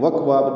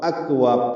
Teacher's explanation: یہاں سے شروع کریں گے، واو ہونٹوں کی نا تمام گلائی سے جلدی ادا کریں گے، حمزہ کو اقصی حلق سے ادا کریں گے، کاف سے ملائیں گے، وکواب نہیں پڑھنا، وہ اکواب پڑھنا ہے. حمزہ کی آواز واضح طور پر آنی چاہیے. کاف ساکن ہے، اس پہ حمز ہوگا.